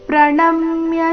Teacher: ಪ್ರಣಮ್ಯ ನ ಮೇಲೆ ಆಘಾತ